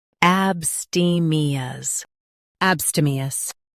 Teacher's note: Stress ste and keep ab light.